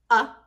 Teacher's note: so the schwa is a sound it sounds like this uh and it's represented by a-e-i-o-u in syllables that are not stressed